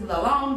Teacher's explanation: It's the letter Va. So you have to put your tongue between your teeth and pronounce a guttural the. So it's not a th normally.